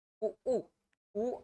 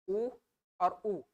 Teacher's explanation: उ उ उ और बड़ा वाला उ, ये कंठ से इसका आवाज आ रहा है।